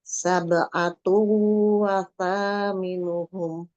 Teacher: Sabe itu banyak qalqalah sugro karena di tengah. Atu wa itu domah tanwin ketemu dengan waw, itu idgham bigunah, dibaca dilebur dan dibaca dengan dengung kan dengan dua harokat